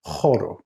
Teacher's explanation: the circumflex again over the h gives it a ha sound it's that guttural sound right at the back of your throat